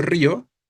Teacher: Si yo pronuncio río, estoy haciendo tónica la I, la cerrada, la débil.